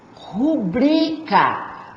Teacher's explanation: Eu falo rubrica, sílaba tônica é o bri. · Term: paroxítona